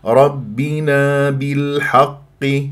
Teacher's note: سي دي ربنا بالحق واللام بالحق قمريه لان بعدها حرف متحرك ولما تكون اللام قمريه يجب ان يجري فيها صوت فتره زمنيه بسيطه